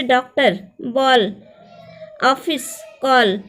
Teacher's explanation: आ और ओ के बीच की ध्वनि है ये।